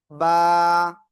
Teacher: দুই ঠোঁটের ভিজা অংশ থেকে এক আলিফ টেনে উচ্চারণ করব।